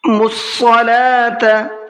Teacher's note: میم کو ڈائریکٹ صاد میں ملانا ہے، بیچ میں واو، الف اور پھر لام، ان چاروں لفظوں کو چھوڑ دینا ہے اور صاد کو منہ بھر کے پڑھنا ہے